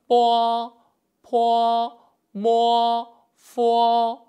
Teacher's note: 첫 번째 발음은 두 입술이 마주칩니다.